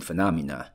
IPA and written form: fəˋnɑmənə (phenomena)